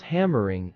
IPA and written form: ˈhæmərɪŋ (hammering)